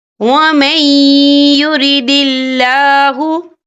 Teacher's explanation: اور آگے دیکھیں یرید اللہ، یا اللہ کا نام باریک پڑھا جائے گا کیونکہ اللہ کے نام سے پہلے زیر ہے · نون ساکن کے بعد جو ہے یا آ رہا ہے اور یا جو ہے حروف یرملون میں سے ہے تو یہاں پر ادغام ہوگا، تو ہم اسے تھوڑا سا غنّے کے ساتھ پڑھیں گے